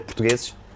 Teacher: É por isso que nós cortamos muitas sílabas, nós portugueses, por exemplo, a dizer portugueses, quase não dizemos as vogais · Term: redução